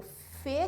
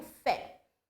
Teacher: O Fê seria fechado, o timbre aberto seria o Fé